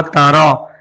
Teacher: را کو موٹا پڑھیں گے اس لیے کہ را پہ زبر ہے، اور جب بھی را پہ زبر یا پیش آتا ہے تو را کو موٹا پڑھتے ہیں، تارا۔